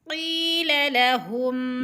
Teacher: قوف یا زیر قی یعنی دو حرکات کے برابر اس کو کھینچنا ہے، اس لیے کہ ادھر یا مدہ ہو رہا ہے، یا ساکن سے پہلے موٹے حروف میں سے ہے، کے نیچے زیر ہے۔